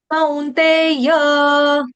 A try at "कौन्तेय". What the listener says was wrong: कौंत नहीं, कौ कौ, COW, कौ, कौन्तेय।